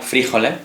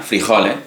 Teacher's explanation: Solo que en un caso es esdrújula, frijoles, y significa guisante, y en el otro es llana, frijoles, y significa alubia o habichuela.